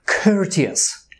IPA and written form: ˈkɜːrtiəs (Courteous)